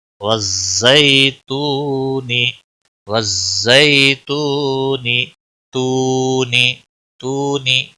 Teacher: واو مدہ ہے، ایک الف کے برابر کھینچنا ہے، باقی نون کو کھینچنا نہیں